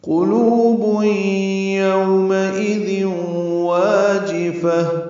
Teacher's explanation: قلوب یومئذ واجفہ، قاف پر لو واو مدہ ہے، 2 حرکات لمبا ہے